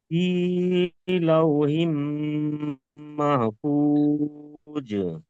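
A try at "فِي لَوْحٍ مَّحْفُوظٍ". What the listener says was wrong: এখানে মাহফুজ যেটা পড়েছেন এটা বড় হা হালকা আওয়াজে পড়বেন। মাহফুজ বলেন।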